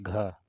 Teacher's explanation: घा कंठ भी है, महाप्राण भी है, घोष व्यंजन है।